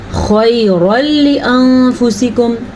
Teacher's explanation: خَيْرًا لِأَنفُسِكُمْ، خا جو ہے حروف مستعلیہ میں سے ہے اس لیے اس کو پر پڑھیں گے. را کو اس لیے پر پڑھیں گے کیونکہ را کے اوپر زبر ہیں اور یہاں پہ بھی اخفا کا قاعدہ کرنا ہے کیونکہ نون ساکن کے بعد فا حروف اخفا میں سے آیا ہوا ہے.